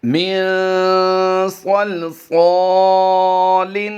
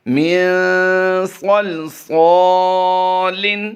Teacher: صاد الف زبر صا کی جو ادائیگی ہے اس میں الف مدہ کیا ہے، ایک الف ہم نے کھینچ کر پڑھا ہے